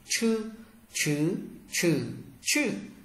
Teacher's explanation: CH là cong lưỡi bật hơi và đọc giống trở nặng.